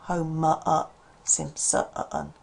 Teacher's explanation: So the stress here is on the ho and the sim. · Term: schwa